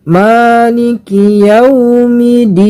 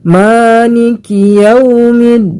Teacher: yang benar ialah kita mentasydidkan huruf dalnya.